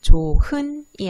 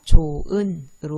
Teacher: 조, 흔이 아니라 조, 은으로 발음되는 히읗 탈락 현상입니다